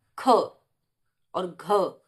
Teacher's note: महाप्राण जैसा कि आपको पता ही चल रहा होगा कि श्वास वायु उच्चारण में ज्यादा निकलती है